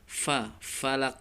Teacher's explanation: gigi atasnya bertemu dengan bibir bawah bagian dalam troll disini Sebutkan seperti huruf F namun disertai dengan keluarnya nafasnya